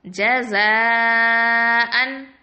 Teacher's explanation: மதுடைய எழுத்துக்கு பின்னாடி ஹம்சா ஒரே வார்த்தையில வந்துச்சு அப்படின்னு சொன்னா நம்ம என்ன பண்ணணும்னா 4 இல்லைன்னா 5 கவுண்ட் அளவுக்கு வரைக்கும் நீட்டி ஓதணும் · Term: மத்தல் வாஜிபல் முத்தசில்